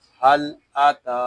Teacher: ہا لام زبر حل، حمزہ زبر آ، حل آ، تا کھڑا زبر تا، حل آتا، تا کو ہم ایک الف تک کھینچ کر پڑھیں گے کیونکہ یہاں کھڑا زبر ہے